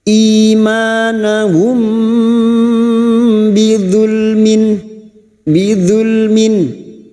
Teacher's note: Sekarang di sini kita wasol atau terus, maka kita uraikan di sini mim sukun bertemu ba ikfa safawi, mim sukun mendengung selama 3 harokat.